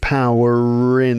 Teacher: There's a R there, power in, because power was followed by an I sound. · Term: linking R